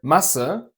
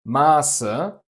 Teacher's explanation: Compare Masse, mass, with a short A, to Maße, measurements, with a long A.